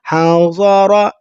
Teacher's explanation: ضاد اور را کو پر کر رہے